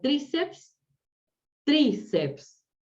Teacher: Tiene la sílaba tónica en la I, por lo tanto, grave, ¿sí? Terminada en vocal.